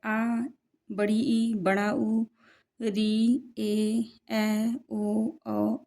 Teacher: वे स्वर जिनके उच्चारण में ह्रस्व स्वर से दोगुना अर्थात दो मात्रा के बराबर समय लगता है उसे दीर्घ स्वर कहते हैं जैसे आ बड़ी ई बड़ा उ